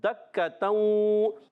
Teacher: और दक्कतऊ, दाल पर ज़बर हरकत को बग़ैर खींचे अदा करें, दाल को काफ से मिलाएं, काफ मुशद्दद ज़रा रुकन अदा करेंगे